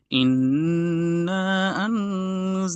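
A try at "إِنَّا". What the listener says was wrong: ইন্না একটু বেশি টানুন।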